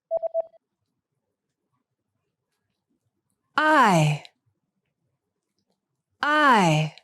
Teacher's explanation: the sound that's pronounced with the lips unrounded